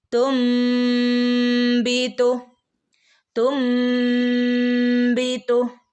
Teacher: ഇവിടെ നോക്കൂ തുമ്പീത്തു നൂനിന്റെ മുകളിൽ മീം വന്നിട്ടുണ്ട് അല്ലെ അപ്പൊ നമ്മൾ ഇവിടെ നൂനിന്റെ തുൻ എന്ന് ഓതാതെ തും എന്നാക്കി മാറ്റിമറിക്കുന്നേ നൂനിനെ മീം ആക്കി മാറ്റിമറിക്കും ഒരക്ഷരത്തെ മറ്റൊരു അക്ഷരമാക്കി മാറ്റിമറിക്കുകയാണ് ചെയ്യുന്നത് ഓക്കേ പിന്നെ ഈ മീമിന് ശേഷം വരുന്ന